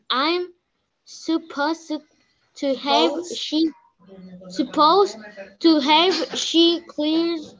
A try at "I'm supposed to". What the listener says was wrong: punto. You have to make a pause. Supposed, I am supposed to have.